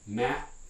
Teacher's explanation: do it with a partially glottalized and uh stop like mat i can do it with a fully glottal stop